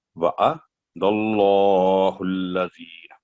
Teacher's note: اللہ کا نام ہے اس کو دال پر فتح ہے زبر ہے تو پر کر کے پڑھیں گے